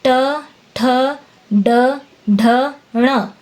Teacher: इनको बोलते समय जीभ मुड़कर ऊपर टकराती है। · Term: ट वर्ग